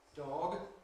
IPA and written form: dɒg (dog)